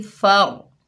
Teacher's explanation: फ़ा के ऊपर ज़बर है, आगे रॉ साकिन है, फ़ा को रॉ साकिना से मिलाएंगे, रॉ पूर पड़ी जाएगी